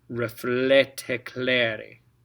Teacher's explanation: Okay, and the reason we're pronouncing the T, again, normally you wouldn't pronounce the T at the end of reflet. But because the next word starts with a vowel, you have to put a T to separate it.